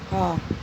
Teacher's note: हा, क्योंकि ये गले से बोली जा रही है। तो हा ध्वनि जो है वो कंठ ध्वनि में भी सम्मिलित है। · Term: कंठ ध्वनियाँ